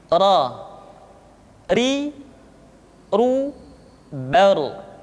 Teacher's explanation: Berikutnya adalah huruf ra. Diucapkan dengan menyentuhkan punggung lidah dengan langit-langit.